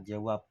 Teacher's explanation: Jawab itu kan sebenarnya B, tapi bisa diucapkan menjadi kata P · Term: netralisasi